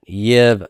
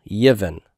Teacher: I could leave the silent shava there, Yiv, if it's a consonant cluster that's easy to pronounce like that, or I can insert a helping vowel, and the helping vowel that's inserted is the segol, Yivin. The Keurig stays, but the helping vowel breaks up the consonant cluster.